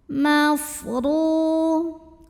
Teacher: Huruf ra dibunyikan secara tafkhim karena barisnya di atas, maka bacanya tebal, pangkal lidah angkat.